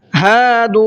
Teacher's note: ہا کو بھی کھینچنا ہے اس لیے کہ یہاں پر الف مدہ کا قاعدہ ہے، اور دو دال کو بھی کھینچنا ہے اس لیے کہ یہاں پر واو مدہ کا قاعدہ ہے، تو دونوں کو کھینچنا ہے۔